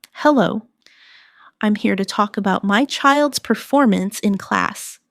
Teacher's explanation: Stress performance. So, it's clear what you're discussing.